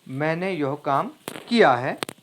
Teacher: यहां पर किया पर जोर दिया गया है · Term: बलाघात